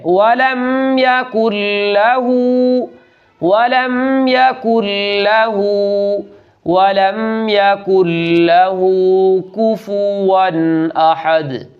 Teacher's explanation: کچھ لوگ یہاں بہت بڑی غلطی کرتے ہیں اور وہ یہ کہ یہاں لام کو کھینچ دیتے ہیں، وَلَمْ يَكُنْ لَهُ كُفُوًا أَحَدٌ، ولم یکن لاہ کفوا احد، یہاں لام کو کھینچنا نہیں ہے بلکہ صرف آدھے الف کے برابر اس کو لمبا کر کے پڑھنا ہے